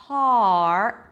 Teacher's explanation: it's the R as in car it's an ah sound so you got to drop your jaw har only at the end you bring the tongue up for